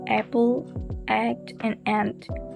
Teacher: You can feel your mouth opening wider and your jaw dropping and your [music] tongue getting quite low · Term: low features